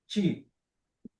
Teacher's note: Isso é ti. Ele é um som lingodental, a língua encostada nos dentes superior.